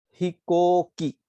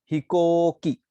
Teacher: को साउंड को प्रोलॉन्ग किया है ऊ से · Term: prolongation of vowels